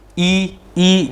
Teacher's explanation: संवृत ई जिसमें हमारा मुंह कम खुलता है